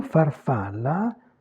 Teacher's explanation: En revanche, le mot farfalla, on a toujours les 3 A, donc le timbre de la voyelle reste le même, elle est toujours A ouverte. Mais ici, on a la syllabe tonique, mais cette fois, le A, il n'est pas allongé, puisqu'il est entravé, fermé par une consonne.